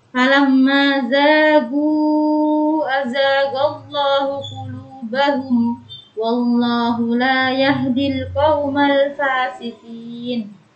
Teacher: dihukumi idhar syafawi dan dibaca jelas, tidak boleh mendengung